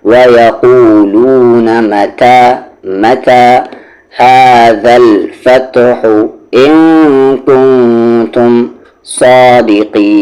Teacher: قی کو کھینچتے ہوئے نون میں ملا دیں گے